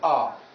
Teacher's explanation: only car has the long vowel ah